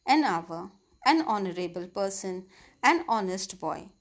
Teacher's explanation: In each of these cases, the letter H is silent.